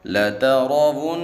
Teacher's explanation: را کو موٹا پڑھیں گے اور نون میں غنہ کریں گے